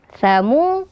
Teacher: ada huruf wau sukun sebelumnya huruf damah maka dibaca Mad Thobi'i dua harakat